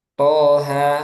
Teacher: Nah, ada to sama ha, ini dibaca 2 harokat dua-duanya.